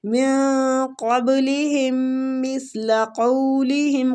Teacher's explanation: نون پہ اخفا کریں گے اور قاف ہے آگے مستعلیہ حروف، قاف کے مخرج کے قریب جا کے اخفا کریں گے